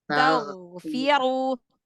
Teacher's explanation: Huruf ghin itu lebih dalam dari huruf kho, lebih bawah.